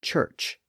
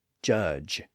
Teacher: folds are open and silent when we make that sound but if we constrict those vocal folds and make them vibrate the sound switches from CH to J